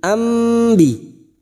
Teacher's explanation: Membalik seperti bertemu dengan huruf mim, ambi. Namun siap membunyikan huruf ba, mendengung selama 2 atau 3 harokat. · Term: bacaan iqlab